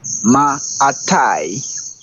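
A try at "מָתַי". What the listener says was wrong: Right, and it's not atai, it's a ma tai.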